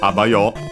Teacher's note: It's a colloquial way to say bye, accented actually on the first syllable, on the a.